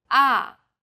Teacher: the fourth tone Falls sharply and quickly from a high pitch